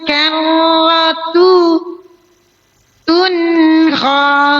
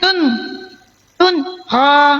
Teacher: kita bunyikan taknya itu satu harokat, baru kita masuk ke en